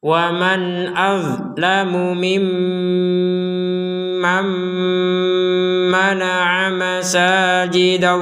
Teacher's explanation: Ada mim bertasydid maka kita membacanya dengan dengungan 100%. Ada nun sukun bertemu dengan mim.